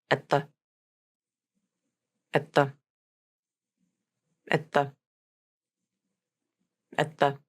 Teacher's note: the T in at is almost always going to be a stop T. These two words are also going to be unstressed and as reduced as possible, so they sound like this.